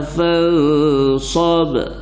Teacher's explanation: Fa idza faraghta fansab ba mendetak qalqalah sughra